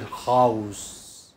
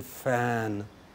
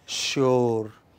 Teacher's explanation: vocal cords are not vibrating in the production of these sounds. These are voiceless sounds.